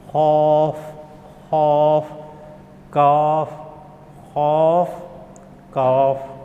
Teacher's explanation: زبان کی جب یعنی جڑ کوے کے قریب جب نرم تالو سے لگے گی تو قاف ادا ہوتا ہے، اور جب یعنی سخت تالو سے لگے گی تو کاف ادا ہوتا ہے